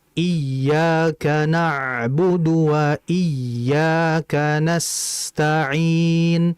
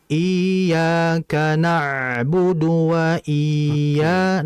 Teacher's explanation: Annabr adalah bunyi yang dinaikkan, bunyi yang beresonansi untuk menunjukkan bahwa huruf tersebut memiliki tashdid.